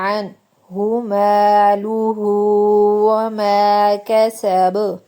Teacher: نون ساکن کے بعد ہا ہلکی میں سے، اس لیے لمبا نہیں کرنا، اظہار کرنا ہے